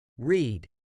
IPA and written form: riːd (read)